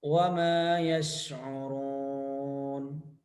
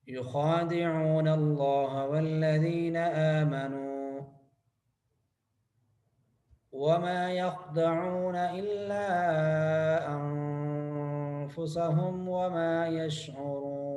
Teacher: شین پر گرفت کرنی ہے، شین پہ قلقلہ نہیں کرنا.